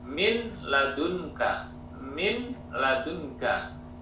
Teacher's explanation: Di sini nun bertemu dengan lam, dibaca masuk atau idgham, tapi tanpa dengung, bila gunnah. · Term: idgham bila gunnah